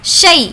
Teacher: اگر زیر ہوتا تو وہ یا مدہ ہوتا، لیکن یہ یا لین ہے اس لیے اس کو کھینچ کر نہیں پڑھیں گے۔